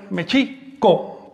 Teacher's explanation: el acento recae sobre la I, Mexico, porque todas las palabras del náhuatl son graves o llanas, es decir, se acentúan, todas las palabras de dos sílabas o más, se acentúan en la penúltima sílaba.